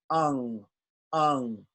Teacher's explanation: at the same time let air come through your nose and nasal passages and make this nasal sound